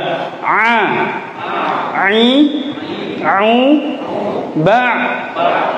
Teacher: Coba, A, I, Au, Ba, ya. Jadi ainnya itu benar-benar terasa, bisa dirasakan di tenggorokan kita jika kita pegang